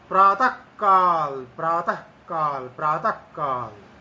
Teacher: प्रातः काल, प्रातः काल, प्रातः काल, आधे ककार जैसा उसका उच्चारण हो जाता है। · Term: जिह्वा मूल्य आदेश